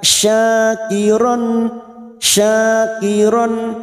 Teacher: syin fathah diikuti Alif dua harakat